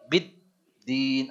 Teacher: Biddin bukan bidin tapi biddin, ada tasydidnya, ada tekanannya